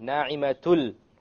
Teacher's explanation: Okay, because there's a tanween followed by a la. So we have the merging, the idgham, but we have it without ghunna.